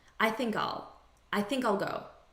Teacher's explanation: in natural spoken english the unstressed pronunciation is all